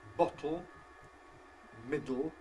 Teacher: words like ‘bottle’, ‘middle’, where you have, yes, lateral release before a syllabic consonant